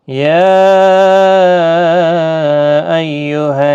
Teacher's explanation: یا یہاں مد منفصل ہے، 3 الف کی مقدار کے برابر کھینچ کر پڑھیں گے